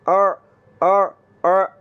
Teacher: आइन की आवाज़ को हमने हलक के दरमियान वाले हिस्से से निकालना है।